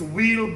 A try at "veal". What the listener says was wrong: What's wheel? No, we use the V.